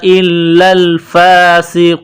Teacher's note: सीन में सीटी की आवाज पैदा करेंगे सीन को बारीक करेंगे